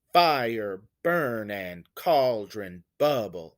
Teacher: when i say fire you can hear that the first syllable is stressed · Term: trochaic